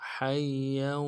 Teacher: حا کو یا کے ساتھ ملانا ہے، یا کے اوپر تشدید ہے، زور دیں گے ، اور یا کے اوپر تنوین بھی ہے، تنوین کو آگے